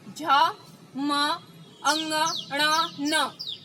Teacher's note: બોલી જુઓ આ અક્ષરો જ, મ, અંગ, ણ, ન. આ તમે બોલશો તો તમારા નાકમાંથી ઉચ્ચારણ નીકળતા તમને જણાશે. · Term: નાસિકા